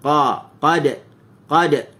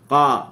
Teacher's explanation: Tapi huruf qaf ni dia bersifat dengan isti'la, pangkal lidah terangkat, tapi dia tidak ada itbaq, dia ada infitah. Lidah kita berada di bawah.